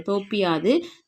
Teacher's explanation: ஒரு மாத்திரை அளவில் ஒலிக்காமல் அரை மாத்திரையா, ஒரு மாத்திரை இல்லாமல் அரை மாத்திரையாக ஒலிக்கிறது. இவ்வாறு தன் மாத்திரை அளவில் குறைந்து ஒலிக்கும் இகரம் குற்றியலிகரம்